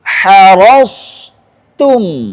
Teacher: Maka tak harus tipis, nggak boleh dia terpengaruh sama huruf isti'la sebelumnya.